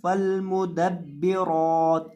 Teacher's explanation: اکثر لوگ یہاں لام کو لمبا کر دیتے ہیں فالمدبرات یعنی لام کو وہ کھینچ دیتے ہیں. اب یہاں لام کے اوپر آپ نے مد نہیں کرنی